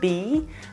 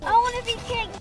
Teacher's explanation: separately, it's a long sound, be, but when it's in a sentence, the verb will always be shorter.